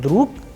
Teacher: in the word druk, again the sound of ge is changing into k. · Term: devoicing